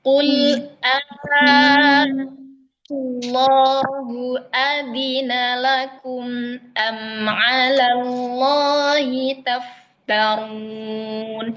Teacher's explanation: qul a itu ee bisa dibaca 2 3 4 sampai 5 harakat. Jadi kita panjangkan ya sampai lima harakat.